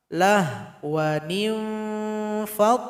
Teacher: Jadi ikhfanya itu nun bertemu fa, ikhfanya awsat, yaitu dengungan dengan samarnya seimbang. Jadi posisinya bibir bawah berjumpa dengan gigi seri atas.